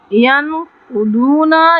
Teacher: ین پہ ہم اخفا کریں گے، قاف پہ تفخیم کریں گے